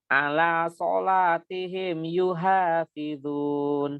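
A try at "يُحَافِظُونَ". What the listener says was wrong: bukan yuha, kalau ha berarti ha ya. Ha, hi, hu, ah.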